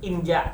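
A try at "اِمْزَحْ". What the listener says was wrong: Imzah. Itu hak itu hak. Imzah zai. Imzah.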